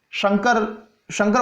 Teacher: शंकर बोलते हैं तब हमारी जीभ जो है श बोलते समय तालु को स्पर्श करती है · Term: श शंकर वाला